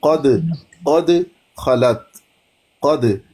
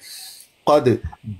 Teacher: दाल साकिन, वो यहाँ पे कलकला किया जाएगा